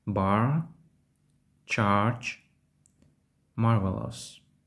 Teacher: інши доголосний читаються як довгі голосні в британському варіанті англійською мовою в таких словах звук R майже не вимовляється а в американській англійській може вимовлятися